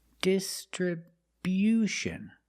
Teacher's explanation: We move the stress to the first and third syllables.